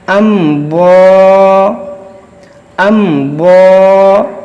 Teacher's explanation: میم ساکن کے بعد ضاد ہے، میم ساکن کے بعد نہ میم ہے نہ با ہے، تو یہاں پر اظہار شفوی ہوگا